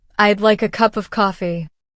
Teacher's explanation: we reduce the words would like into a smooth phrase, almost like I'd like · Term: linking